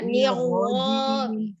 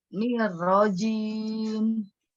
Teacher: ni dulu tipis, ro baru tebal.